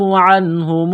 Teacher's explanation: نون ساکن پر غنہ نہیں کریں گے، آواز ناک میں نہیں چھپائیں گے۔